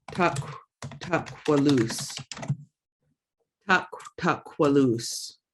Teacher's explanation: K raised W, so you know you're going to be rounding your mouth and blowing out